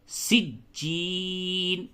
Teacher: جیم کے اوپر تشدید ہے، سختی کے ساتھ ملائیں گے